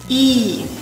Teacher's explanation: Вначале он напряженный, вторая часть постепенно сходит на нет.